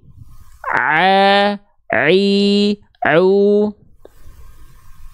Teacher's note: Huruf ain dilafalkan dari bagian tengah tenggorokan